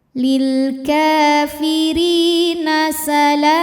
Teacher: karena ada ya sukun sebelumnya kasrah, maka ri panjang 2 harokat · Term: mad tabi'i zahiri